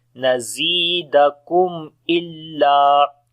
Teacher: After the mim sakin, the next letter is hamza. We make izhar, which is izhar is shafawi here, the clear sound of mim.